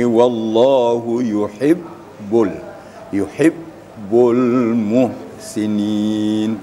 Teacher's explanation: Syiddah artinya suara terputus apabila bertemu dengan huruf ba, membaca ba, apalagi ba itu bertasydid atau musyaddadah.